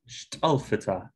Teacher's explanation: syllable contains a complex onset in addition to a weak foul we get stress on the first syllable rather than the expected second syllable stress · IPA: ʃt'əl.fi.tʰə